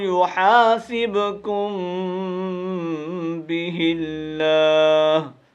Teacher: غنہ اس طرح ہی جس طرح نون کی آواز، نون کے اوپر غنہ ہم نے کی ہے، اس طرح میم کے اوپر آواز کو ناک کے اندر لے جا کر کے رکھنا ہے اور ہونٹوں کو تھوڑا بند رکھنا ہے